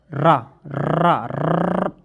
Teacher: जीभ अत्यधिक कंपन करती है